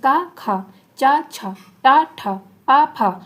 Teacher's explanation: कंपन नहीं हो रही तो क्या होते हैं? अघोष होते हैं।